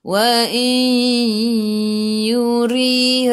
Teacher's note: jadi idgham ma'al gunnah, masuk bersama dengung